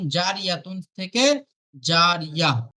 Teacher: গোল তায়ের উপরে থামতে হলে সেটি হা সাকিনের মতো পড়তে হবে